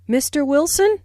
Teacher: notice the rising intonation on mr wilson which is used to address someone